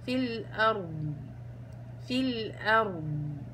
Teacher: والضاد يا أخوات ما هي إلا حرف رخو، لو وقفت عليها بدي أعطيها زمن